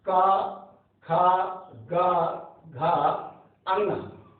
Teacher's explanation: अंगा नासिक के अंतर्गत आता है क्योंकि नासिका से उसका उच्चारण होता है।